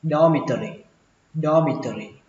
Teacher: Ký túc xá đọc là dormitory, xuống giọng ba âm sau lên giọng âm đầu tiên, dormitory dormitory.